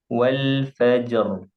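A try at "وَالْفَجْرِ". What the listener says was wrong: kurang kurang tebal coba lagi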